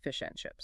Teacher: It's the sound of a vowel completely losing its energy because it is unstressed.